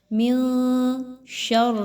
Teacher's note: آواز کو، نون کی آواز کو آپ نے ناک میں چھپانا ہے، مخفی کرنا ہے ود غنہ۔ من شر، را کے نیچے زیر آ گیا تو را کو ہم باریک طریقے سے پڑھیں گے، موٹا نہیں کرنا۔ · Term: اخفا